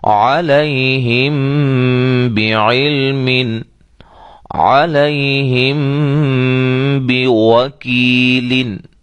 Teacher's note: یہ میم ساکن کے بعد با آ جائے تو وہاں کیا ہوتا ہے؟ اخفا ہوتا ہے،